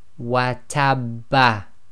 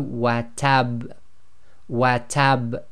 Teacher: slight echo must be audible, must be intense, but must not be converted into a fatha · you don't want to turn that echo into a fatha. You've got to be very careful with that.